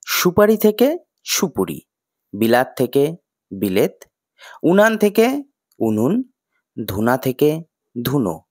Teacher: পূর্ববর্তী বা পরবর্তী স্বরের প্রভাবে অসম স্বরবর্ণ সমস্বর্ণে পরিণত হয়েছে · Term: স্বরের সঙ্গতি